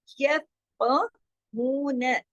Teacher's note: यफ़क़हून, यफ फा को जमाओ के साथ, काफ को मोटा, हू को दो हरकत, नून को सिर्फ एक हरकत